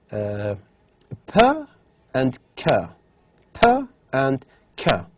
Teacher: These two phonemes are voiceless stops